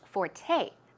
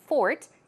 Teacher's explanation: It's F-O-R-T-E, but it's pronounced forte. The stress goes on the second syllable, okay? It's not fort, it's forte.